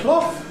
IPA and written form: klɒθ (Cloth)